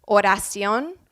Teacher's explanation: The Spanish R is produced right behind the teeth on what we call the alveolar ridge. It's where the D and the L are pronounced.